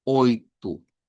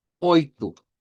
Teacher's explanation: casi como está ya escrito, pero cámbiale la o por una u